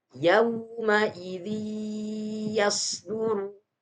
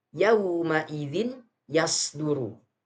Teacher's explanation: tanwinnya yaumaidin yasduru ingat kawan-kawan sekalian suara nun sukun atau tanwin suara nun sukun atau tanwin melebur ke huruf setelahnya disertai dengan dengung